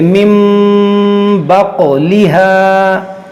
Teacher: یہاں پر دیکھیے نون ساکن کے بعد حرف با ہے تو یہاں پر بھی اقلاب کا قاعدہ لگے گا یعنی کہ نون ساکن کو ہم میم سے بدل کر اخفا کریں گے، غنہ کریں گے